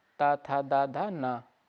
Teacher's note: तो ना वर्ण का उच्चारण स्थान दंत है, ये सघोष और अल्पप्राण तथा नासिक के वर्ण है।